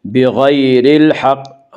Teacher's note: وَيَقْتُلُونَ النَّبِيِّينَ بِغَيْرِ الْحَقِّ، غین کو پر پڑھیں گے، غین حروف مستعلیہ میں سے ہے۔ بغیر الحق، یالین وہ یا جو ساکن اس سے پہلے زبر ہو، یالین کو نرم آواز کے ساتھ جلدی پڑھیں گے۔ بغیر الحق، را کو باریک پڑھیں گے، را کے نیچے زیر ہے۔ · بغیر الحق، یالین وہ یا جو ساکن اس سے پہلے زبر ہو، یالین کو نرم آواز کے ساتھ جلدی پڑھیں گے۔ بغیر الحق، را کو باریک پڑھیں گے، را کے نیچے زیر ہے۔ بغیر الحق، قاف میں قلقلہ ہوگا، قاف حروف قلقلہ میں سے ہے۔